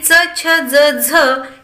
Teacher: आता या ठिकाणी च, छ, ज, झ ही जी व्यंजनं या व्यंजनांचा तालूशी हे संपर्क येतो म्हणून त्यांचं नाव तालव्य आहे. आणि पुढे चालून हे पहा इथे शेवटी मी लिहिलेले आहे च, छ, ज, झ हे दंत आणि तालू यांचा सुद्धा इथे आपल्याला स्पर्श होतो.